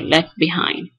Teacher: In this case, we have left. We know that left at the end it ends with a T, with a voiceless alveolar stop. But then in this case, it's deleted. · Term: Apocope